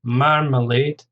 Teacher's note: Marmalade, stress on the first syllable, 3 syllables again